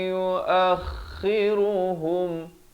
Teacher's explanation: Walakin yuakhiruhum idhar syafawi. Hum jangan panjang, jangan pula pandai-pandai pergi buat 2 harakat di sini.